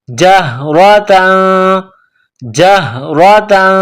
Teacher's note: تا دو زبر تن، دو زبر تنوین ہے، تنوین کے بعد فا ہے، حروف اخفا ہے تو یہاں آواز ناک میں چھپائیں گے، غنہ کریں گے.